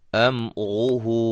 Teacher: अब रा के ऊपर पेश है, इसलिए ये रा जो है मोटी हो रही है। अब इसको अम रूहू नहीं, मीम को हिलाएंगे नहीं, मीम को हिलाना नहीं है, क्योंकि ये हरूफ कलकला में से नहीं है।